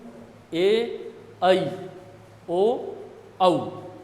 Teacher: अंतिम चारों को संयुक्त स्वर भी कहा जाता है क्यों क्योंकि यह केवल दुगुने समय में ही नहीं बोले जाते बल्कि दो स्वरों के मेल से इनका उच्चारण होता है